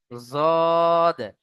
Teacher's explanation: জিভের কিনারা এবং তার বরাবর উপরের মাড়ির দাঁতের গোড়ার সাথে লাগিয়ে উচ্চারণ হয়। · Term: জদের মাখরাজ